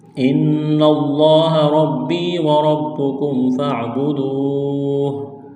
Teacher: نون مشدد ہے، غنہ کریں گے، آواز ناک میں چھپائیں گے